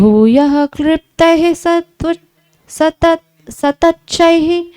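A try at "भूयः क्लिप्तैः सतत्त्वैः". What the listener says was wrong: न तच्च नहीं तत्वैः, वह है वो। भूयः क्लिप्तैः सतत्वैः सगणविधिगणैरप्यजाण्डैरखण्डैः।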